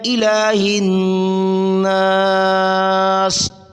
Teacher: ہا کو نون سے ملایا، نون مشدد، غنہ ضروری ہے